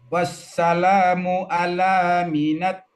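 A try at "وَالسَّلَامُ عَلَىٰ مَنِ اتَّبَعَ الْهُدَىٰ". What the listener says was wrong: Nah, hurufnya. Mimnya itu harokatnya fathah. Manittaba'al huda.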